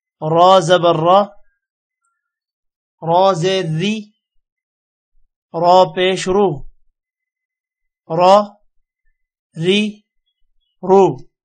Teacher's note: را کے اوپر زبر اور پیش ہوگا تو را موٹا ہوگا، اور اگر را کے نیچے زیر ہوگی تو را کو موٹا نہیں کرنا